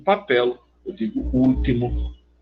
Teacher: Eu concordo se você disser papel, mas se você disser papel pronunciando L como L, não é mais ditongo